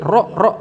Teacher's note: Yang ke-7, punggung lidah bergetar minimal 2 kali. Bergetar minimal 2 kali, hurufnya adalah ro.